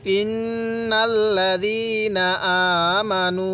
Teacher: আগে নুনের মধ্যে গুন্নাহ করব, তারপর নুনকে আবার এই লামের সাথে লাগিয়ে দিব